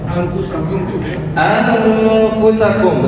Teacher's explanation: Fa adalah salah satu huruf ikhfa. Cara membaca nunnya disamarkan dan tidak dijelaskan